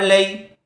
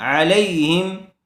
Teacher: زبر والے حرف کے بعد یا ساکن آئی ہوئی ہے، اس لیے لین کا قاعدہ ہوگا، جلدی ادا کریں گے